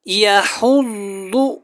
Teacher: یہاں پہ جو ضاد ہے اس کو موٹا پڑھنا ہے اور آپ نے ہا کو حلق سے ادا کرنا ہے